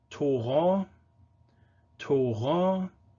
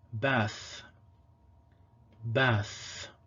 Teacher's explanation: Tav also has a fricative allophone, th.